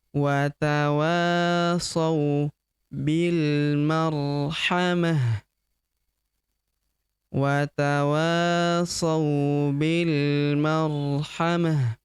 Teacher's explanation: Ta marbuth di ujung dirubah menjadi ha sukun ya karena kita berhenti atau kita hentikan bacaan kita di sini.